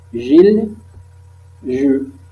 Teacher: constrictive, fricative, prédorso-post-alvéolaire, sonore. Nous avons des vibrations